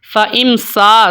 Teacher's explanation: سین باریک حروف میں سے ہے، الف کو یہاں پر ہم نے باریک پڑھنا ہے. اگر کوئی پڑھتا ہے فَإِمْسَا سو سین کو باریک کر کے الف کو اگر کوئی موٹا کر لیتا ہے تو پھر وہ غلط ہو جائے گا.